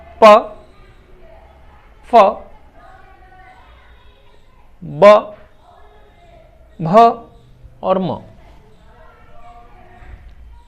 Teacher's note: Bilabial दो होठों से मिलकर बोले जाने वाले शब्द। हिंदी में इसको ओष्ठज ध्वनियां भी कहते हैं।